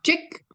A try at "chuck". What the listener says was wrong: Chuck. Well, it's chuck. It's got to be the A vowel. Chuck. Well, you've got the vowel right, but it sounds like an I vowel to me.